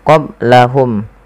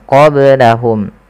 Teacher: Nah, ketika melafalkan qaf lebih tebal sedikit. Kemudian qablahum ada ba sukun maka dibaca dengan qalqalah. Kesalahan yang terjadi adalah tidak memantulkannya.